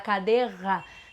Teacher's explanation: sai uma coisa com aquele r mais posteriorizada esse é o r forte não é um R fraco então você não tá fazendo certo substituindo um R pelo outro